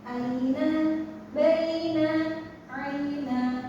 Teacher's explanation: Nah, di sini ada I. Jadi, bunyinya itu pakai I, bukan pakai e.